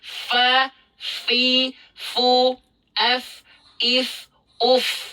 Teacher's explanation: huruf fa itu cara melafalkannya dengan cara ujung gigi seri atas disentuhkan dengan bibir bawah bagian dalam